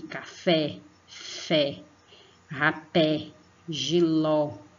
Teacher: Percebam que o som sai só pela boca. Então, o acento agudo, ele aparece somente sobre as vogais A, E, I, O, U, e ela fica com som aberto, tá?